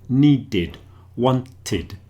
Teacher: It's a sort of a id sound there. Needed, wanted, because those words end in d and t.